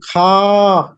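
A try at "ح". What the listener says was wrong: না না খ না, এটা হলো হা হা।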